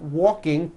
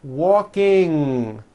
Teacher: want you to realize that there is not a ckk sound there is not a k sound the word is not walking it's walking with that NG ending